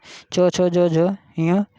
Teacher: तालव्य व्यंजन किसे कहते हैं, तालु और जीभ के स्पर्श से बोले जाने वाले व्यंजन। जीभ के मोटे वाले भाग और तालु के स्पर्श से बोले जाने वाले वर्ण तालव्य व्यंजन कहलाते हैं